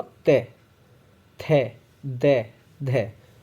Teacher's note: दंत्य में क्या होता है, बोलते हो हमारी जीभ दांत से टकराती है। जैसे मैंने बोला ते, थे, दे, धे, तो इसमें भी टोटल 5 होते हैं, तो दंत्य में तय वर्ग आता है, बिल्कुल करेक्ट है।